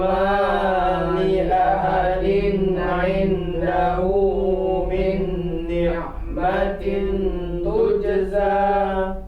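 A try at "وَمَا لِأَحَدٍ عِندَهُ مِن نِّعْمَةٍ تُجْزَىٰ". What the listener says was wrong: Sekali lagi, ikhfanya diperpanjang sedikit lagi.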